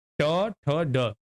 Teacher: ये मुर्धा की सहायता से बोले जाते हैं